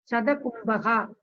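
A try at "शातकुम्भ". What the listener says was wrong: Shatakumbha. I think still you have the problem of Katora Vyanjana and Mridu Vyanjana. It is not Shatakumbha. Shatakumbha.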